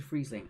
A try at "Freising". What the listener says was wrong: Freising, not Friesling. Freising.